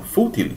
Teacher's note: Não é a última que é mais forte, tem um acento em cima do fu, né? Então, essa palavra ela é uma palavra liana ou grave.